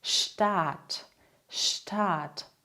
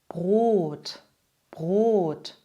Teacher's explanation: Der Vokal wird hier also gedehnt. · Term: langen Vokale